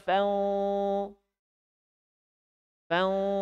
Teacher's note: Angkat bagian pangkal lisan ke dalam, bukan ke atas fang, tapi ke dalam fau. Fau, bukan fang. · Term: huruf tebal